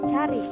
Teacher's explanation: Yang ketiga ada huruf A. Rendah, depan, tak bulat